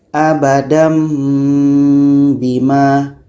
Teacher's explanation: Jadi asal bacanya adalah abadan bima. Jadi bunyi tanwin ubah ke mim. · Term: iklab